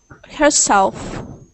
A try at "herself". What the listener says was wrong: Herself. Sometimes you forget to make that F sound at the end whenever you say herself. Just make sure we hear herself, not herself. Herself.